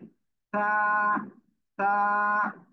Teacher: জিহ্বার আগা, এই সামনের উপরে দুই দাঁতের আগায় লাগাতে হবে, লাগিয়ে উচ্চারণ হবে